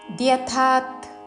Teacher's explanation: ఈ పదము విడదీస్తూ ఏవ ఏకలవ్యంలో పలికే ఏవమేతద్ అని పొల్లు దాతో ముందు పలికి, తర్వాత ద్యథాత్ ద్యథా మహాప్రాణాక్షము థా దీర్ఘముతో దానికి పొల్లు తా కలిపి